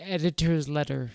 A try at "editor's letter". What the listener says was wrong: It's too, you're too, what's it called? Syncopated.